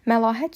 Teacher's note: məlahət sözündə ə incə, a qalın saitdir.